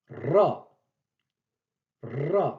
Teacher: C'est le R roulé. Ce n'est pas le R grassé, c'est le R roulé.